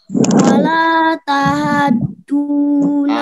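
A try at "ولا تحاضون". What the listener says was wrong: Haknya kurang panjang, Nak.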